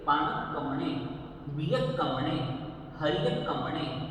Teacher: अब देखिए गौर करें, इसे पान कमने नहीं पढ़ना, पाणक कमने पढ़ेंगे, क्योंकि बीच में आधा क है तो उस पर स्ट्रेस देंगे